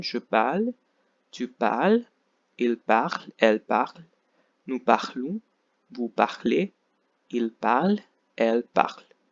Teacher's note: You have to stop pronouncing just before ENT because the ENT is completely silent.